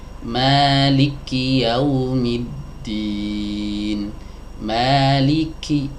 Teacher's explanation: Banyak yang membaca Maliki Yaumiddin ini dengan mentasydidkan huruf kafnya.